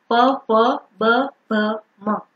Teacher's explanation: लिबियल यानी कि ओष्ठ्य हम बोलेंगे तो वो हमारे दोनों जो लिप हैं वो आपस में टच करेंगे